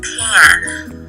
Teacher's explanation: For p and pan, vibration begins at a later time, and the pulses represent this, as there is a gap before the voicing begins.